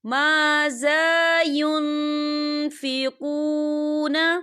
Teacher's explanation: نون ساکن کی آواز کو ناک میں چھپائیں گے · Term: اقفا